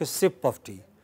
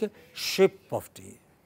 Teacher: in Bengal you don't have s. For that also they say sh. So they don't take a sip of tea, they take a ship of tea.